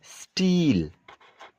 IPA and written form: stiːl (steel)